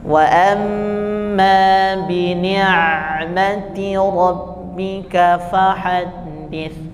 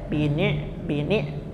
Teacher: Hamzah itu terhenti sedangkan Ain itu bainiah mengalir